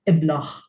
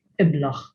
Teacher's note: You would find it deheb sometimes with the older population in some parts of Malta, or in Gozo, which is the other island, as deheb maybe, but generally deb, which means gold. Now, when it is found at the end of the word, the akka, which usually has no sound, it is pronounced as a h.